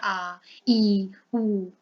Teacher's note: देखिए आ और अ से मिलके बना है, दो अ से मिलके आ बना है, तो दीर्घ हो गया, थोड़ा बड़ा हो गया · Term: दीर्घ स्वर